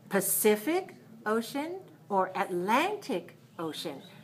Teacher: I don't need to stress the word ocean because both of them are oceans.